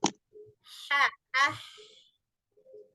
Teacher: Kalau yang hamas ini, dia itu kalau mengucapkan, dia itu terbuka pita suaranya.